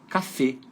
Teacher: não é um som aberto não é uma vogal aberta F é uma vogal fechada só que a sílaba tônica fica no final